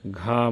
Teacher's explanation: घ महाप्राण घोष है